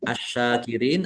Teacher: Alif lam syamsiyah. Karena tidak dibaca langsung masuk ke huruf berikutnya yaitu syin ditandai sininnya ada tasdidnya sininnya dibaca dobel.